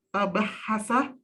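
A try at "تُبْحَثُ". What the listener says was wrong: Bukan tabahasa itu kada doma. Itu ada doma itu dimajhulkan fiilnya. Tubahasu. Itu dimajhulkan fiilnya.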